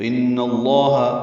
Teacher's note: لفظ اللہ کے آخر میں ہاں پر جو زبر ہے وہ ان کی وجہ سے آئی ہے، تو ان اللہ لام کو پر پڑیں گے، دو حرکات لمبا کریں گے. · ان میں نون مشدد پہ غنہ ہے